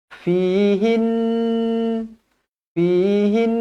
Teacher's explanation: Nun yang bertanda sabdu wajibul gunah dengung dua harakat